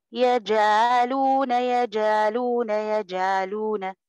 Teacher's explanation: احنا يعني العين مش ممكن هننطقها كده، يبقى بننطقوا العين كصوت الالف وده غلط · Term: العين مبتوره